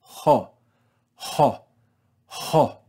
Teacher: we're going to add breath before this omicron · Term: rough breathing